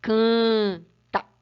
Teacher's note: Na verdade, ele está nasalizando a vogal. Quer dizer, está falando que a vogal tem um som nasal, que é falado pelo nariz.